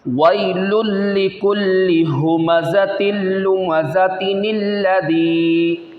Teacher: یہ تنوین کے بعد حمزہ وصلی آ جائے یعنی رکنے والا، تو وصل میں حمزہ وصلی کو گرا دیتے ہیں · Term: نون قطنی